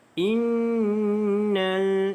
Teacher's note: Di sini ada nun yang ada tanda syaddah, maka wajibul gunnah, wajib dengung dengan kadar 2 harakat.